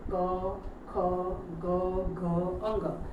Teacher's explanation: આ જે બધા છે વ્યંજનો એનું ઉચ્ચારણ ક્યાંથી થાય છે કંઠમાંથી ગળામાંથી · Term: ક વર્ગ